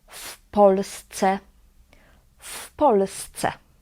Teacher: we pronounce it as one word and here in this context is pronounced as fpolsce